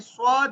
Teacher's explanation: And swad, it is to be pronounced bit thicker, in a thick manner. And in Urdu, we say mota padna hai, right?